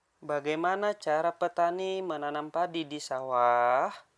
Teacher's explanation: kalimat yang diakhiri tanda tanya, intonasi suaranya menurun.